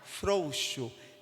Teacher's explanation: Percebe que a força vai estar no O e não no U. O U vai sair um pouco mais fraco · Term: decrescente